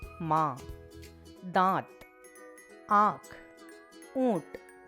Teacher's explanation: अनुनासिक, इसे अनुनासिक या चंद्रबिंदु कहते हैं। इसका उच्चारण करते समय नाक और मुंह दोनों से एक साथ ध्वनि निकलती है। इसका चिन्ह होता है यह, जैसे मां, दांत, आंख, ऊंट।